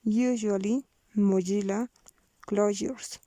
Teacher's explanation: Voiced lenis palato-alveolar fricative.